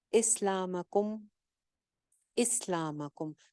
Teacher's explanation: سین کو جما کے رکھنا ہے, سیٹی والی آواز آنی چاہیے